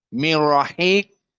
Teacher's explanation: Qaf dalam keadaan mufakhamah